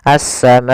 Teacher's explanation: Panjangnya adalah 4 harokat, maka kita panjangkan ma-nya 4 harokat. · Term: mad wajib muttasil